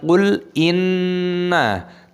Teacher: Lamnya sukun dibaca qul inna, tasdid nunnya didengungkan tapi tidak boleh dibaca inna ma, ikut-ikutan nunnya dibaca panjang tidak boleh karena nunnya pendek, jadi cukup didengungkan, dan mimnya dibaca panjang 5 ketukan mad jaiz munfasil.